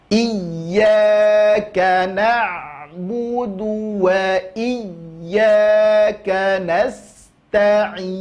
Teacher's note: Ain belajar lagi, tidak boleh masuk ke rongga hidung, ya, karena makhrajnya adalah tenggorokan atau wastul halqi, tengah-tengah tenggorokan.